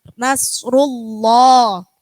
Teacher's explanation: Kalau ini nasrullah sebelumnya lafadz Allah harokatnya dumma maka bacanya tebal.